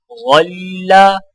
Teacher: غا کی آواز موٹی اور نرم ہوتی ہے